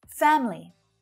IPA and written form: 'fæm(ə)li (FAMILY)